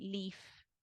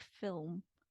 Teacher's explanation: like leaf, it's typically what we call light L, versus something like film, where it's a dark L. So it's light versus dark depends on um, the tongue position, basically.